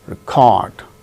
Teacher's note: Second syllable gains stress when it is used as verb